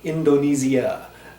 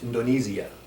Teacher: Nothing real tricky about that, except in local pronunciation, you're going to hear the locals pronounce that as Indonesia. They will make that I sound a little bit more E. That S is going to be a little bit more like a Z in this particular case. In Indonesia, they really enunciate and they don't compress the end like Americans, even myself.